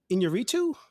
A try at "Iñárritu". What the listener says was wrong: It's close enough. You have to roll your R's.